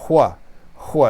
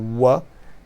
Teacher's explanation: And this consonant, which is like a hua, so kind of a bit of a breathy consonant here, but with the W, it's a little bit of a lip sound, the wa.